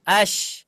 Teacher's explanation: kita ucapkan di mana makhrajnya Mak huruf ada di Tengah lidah ketika kita ucapkan as otomatis Tengah lidah kita itu naik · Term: huruf syin